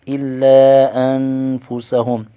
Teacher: نون ساکن کا اخفاء ہوگا، یعنی غنہ کر کے پڑھیں گے۔ میم ساکن کا اظہار شفوی ہوگا، یعنی غنہ نہیں کریں گے۔